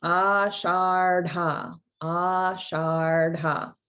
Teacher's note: The erdha is the retroflex erdha, and then it's also a mahaprana, like ashardha, ashardha.